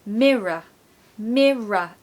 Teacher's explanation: we want to start with M the stress goes on the first syllable okay mirror mirror to be honest when there's a Double R